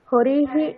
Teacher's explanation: হরি এখানে ইকারের পরে বিসর্গ আছে তাই হকারের সাথে ইকার যুক্ত হয়ে হরিহি এরকম উচ্চারণ হবে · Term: বিসর্গের উচ্চারণ